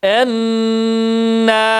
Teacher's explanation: şeddeyi tutup ve bir elif miktarı nun harfini uzatıyoruz